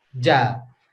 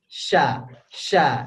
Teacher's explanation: Jadi sya dengan ja itu sama di situ juga ya. Yang beda adalah kalau ja ditempel, kalau sya dikasih gang sedikit, gang kecil, dikasih jalan kecil untuk anginnya lewat.